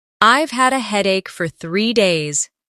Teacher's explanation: Stress headache and 3 days.